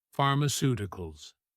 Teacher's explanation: Pharmaceuticals stress on the third to last syllable.